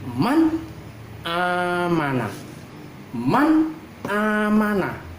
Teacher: mati apabila bertemu dengan Hamzah harus dibaca izhar contoh Man amanah nun mati ketemu Hamzah harus dibaca jelas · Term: bacaan izhar